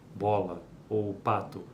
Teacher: por exemplo Vamos pensar na consoante da palavra bola ou pato ela é obstruída pelos lábios bilabial